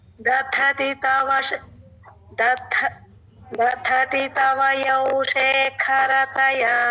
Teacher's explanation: రెండవ ధ మహాప్రాణం అండి